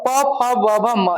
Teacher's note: प फ ब भ म इसका उच्चारण स्थान ओष्ठ होता है।